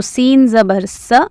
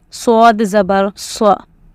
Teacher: sin is a light letter whereas swad is a heavy letter